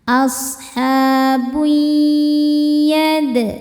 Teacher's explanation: Berikutnya ada idgham bi gunnah karena ada tanwin dhammah menghadapi huruf ya. Cara bacanya tanwinnya leburkan atau masukkan ke ya, kemudian kita dengungkan. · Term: idgham bighunah